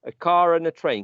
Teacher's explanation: these non-rhotic varieties which do not produce this final er would produce it when the er would serve at the purpose of linking these vowel sounds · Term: linking r